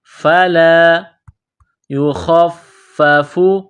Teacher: خا کو فا کے ساتھ ملانا ہے، فا کو دبانا ہے، فا میں سختی کرنی ہے